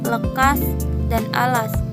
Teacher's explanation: L merupakan konsonan artikel alveolus yang dihasilkan dengan menaikkan lidah ke langit-langit sehingga udara terpaksa diaduk dan keluarkan melalui kedua sisi lidah, dan bunyi yang dihasilkan seperti lekas dan alas.